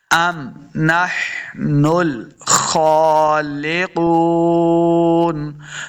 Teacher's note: अम मीम को साकिन करना है, अम यानी झटका के साथ नहीं पढ़ेंगे, ना ही इसके ऊपर कलकला करना है, बल्कि मीम को साकिन करेंगे, अम नहनुल खालिकून।